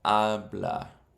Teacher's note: The emphasis is on the second last syllable.